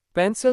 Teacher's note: पेंसिल second part सिल is unstressed sounds like पेंसिल not पेंसिल.